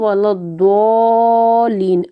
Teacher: دیکھیں اس کے اوپر مد ہے، اور یہ جو مد ہے نا، اس مد کی مقدار یعنی کہ اس کو کھینچنے کی جو مقدار ہے نا وہ 6 حرکت ہے